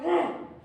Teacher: रे यानी कि जो हमारी जीवा है वो दांतों से टकरा रही है, इसीलिए इसको बोल रहे हैं लुंठित व्यंजन।